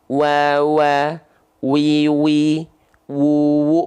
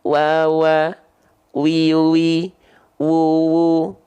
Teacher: kedua bibir dengan posisi maju seperti mengucapkan huruf u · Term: huruf wau